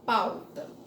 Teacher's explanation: quando a gente pronuncia a vogal que tá na frente ela tem mais força do que o som da semivogal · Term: decrescente